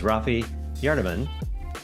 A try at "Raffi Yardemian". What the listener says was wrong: Raffi Yardemian, just a little bit more of a in the middle there.